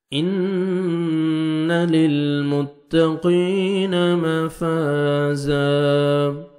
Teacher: نون مشدد غنہ کریں گے